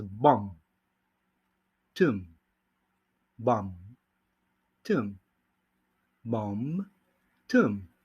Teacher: Ahora sí, la B silenciosa. Aquí, como vamos a ver en estas dos palabras, no se dice la B. Solo decimos bomb, tum, bomb, tum, bomb, tum.